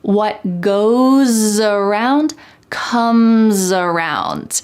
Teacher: Here we have two instances where the S at the end of goes is followed by a vowel. So that S is going to sound like a Z in American English.